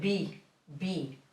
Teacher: V and B sound exactly the same in Spanish